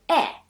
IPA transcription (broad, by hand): e